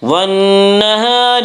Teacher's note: نون مشدد غنہ ہوگا، غنہ کی مقدار ایک الف ہے